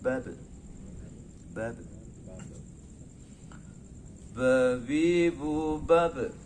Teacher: Sifatnya qalqalah ketika dia mati dipantulkan